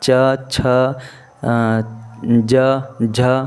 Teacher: तालु के उच्चारण स्थान से ये सारे वर्ण आते हैं। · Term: तालव्य